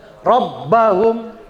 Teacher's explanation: Ba juga ada tasdidnya. Tapi kalau ba nggak dibaca gunnah ya. Rabbahum, ya, cukup digentak aja ya, ditekan.